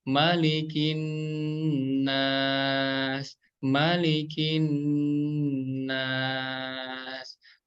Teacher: huruf nun didengungkan 2 harokat ya, didengungkan 2 harokat.